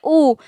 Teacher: होठ बिल्कुल गोल हो जाता है। बड़ा ऊ भी बोल के देखिए तो भी होठों की जो आकृति है बिल्कुल क्या हो जाएगी, वृत्त के समान गोल हो जाएगी। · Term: वृत्ताकार